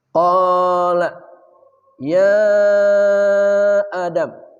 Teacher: Mad tabi'i bertemu hamzah, di lain kata namanya mad jaiz munfasil. Biasa disingkat mad munfasil. Panjangnya 4 harakat.